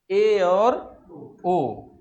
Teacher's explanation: अर्ध संवृत, इसके उच्चारण में जो है, इसके उच्चारण में मुख थोड़ा सा संवृत से अधिक खुलता है। संवृत में मुख पूरा लगभग बंद रहता है, लेकिन अर्ध संवृत में संवृत से थोड़ा अधिक मुख खुलता है। इसमें दो स्वर आते हैं, ए और ओ। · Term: अर्ध संवृत स्वर